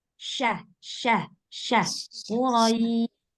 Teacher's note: syin dari tengah lidah